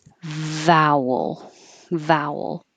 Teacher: So make a V, top teeth on your bottom lip.